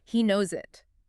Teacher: We don't pause. So instead of hearing he knows it as 3 separate words, you'll hear it blended together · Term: linked S